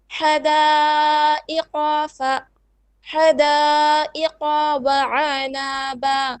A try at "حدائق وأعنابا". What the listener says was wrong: First, you stretch the qaf too much. It's حدائق. Okay, and then وأعنابا.